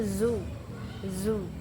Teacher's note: bunyi z bunyi voice karena bergetar dan termasuk aviolal aplikatif.